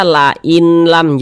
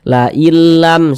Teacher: dia tidak disertai dengan gunnah, jadi pendek saja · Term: idgham bila gunnah